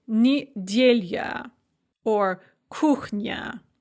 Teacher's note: If you have an unstressed ya at the end of a word, it can often be pronounced as a kind of a y sound